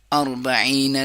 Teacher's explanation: نہ یا کی آواز کریں گے نہ حمزہ کی آواز کریں گے، عین گلے کا درمیانی حصہ